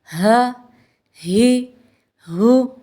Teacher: ہا کی ادائیگی میں زبان کی جڑ کو حلق کی طرف دبائے بغیر باریک اور بغیر رگڑ کھاتی سانس میں پڑھیں۔